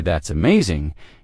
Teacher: When you say that's amazing, your tone rises with excitement.